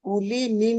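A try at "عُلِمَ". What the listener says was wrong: মিম জাবার। উলি, লি টান দিচ্ছেন কেন? উলিমা।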